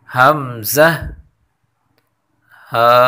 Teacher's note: ایک دفعہ پھر پڑھیں، واو، ہا، ہا، ہا، حمزہ، حمزہ، حمزہ، حمزہ اور ہا کی مخرج اقصی حلق، یعنی یہ دونوں حرف حمزہ اور ہا ادا ہوتے ہیں گلے کے نچلے حصے سے، یعنی گلے کا جو سینے کی جانب حصہ ہے وہاں سے یہ دونوں حرف ادا ہوتے ہیں۔